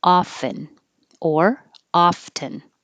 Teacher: Blue, blue. 20, you can say the T, but it's not as common. So most people don't have the T, and it sounds like often.